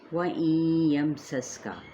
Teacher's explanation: اسی طرح سے پھر یہ ادغام مع الغنہ کا قاعدہ، سین پہ سیٹی کو واضح کریں